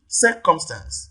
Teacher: the first syllable here receives the primary stress